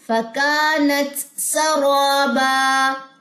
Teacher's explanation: میں نے ذرا اس کو تھوڑا سا پاز کر کے بتایا تاکہ تا کی بھی ساؤنڈ آئے اور سین کی بھی. سین میں بھی ہمس ہوتی ہے، تا میں بھی ہمس ہوتی ہے